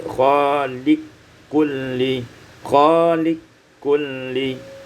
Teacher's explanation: Pada ayat yang ke-62, khaliqu kulli, idghamul qaf fil kaf, diidghamkan qaf pada kaf menjadi khaliq kulli, khaliq kulli.